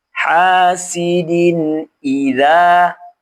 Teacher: Ha dibaca panjang dua harakat karena alif didahului fathah setelahnya bukan hamzah atau sukun asli.